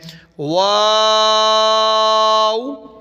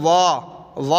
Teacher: مد ہے واؤ کے اوپر، لمبا کریں گے، آخر پہ ہونٹ ہلکے سے گول کرنے ہیں، واو۔ بعض لوگ پڑھتے ہیں وا نہیں پڑھنا، او آخر میں ہلکا سا، واو۔